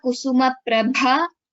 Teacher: the second pada kusuma prabha bha is mahaprana